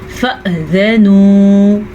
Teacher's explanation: پھر سے اب الف کے اوپر ساکن آ گیا تو الف نہیں رہا، یہ حمزہ بن گیا. حمزہ تو جھٹکے سے ساتھ پڑھا جاتا ہے جب بھی اس پہ ساکن ہو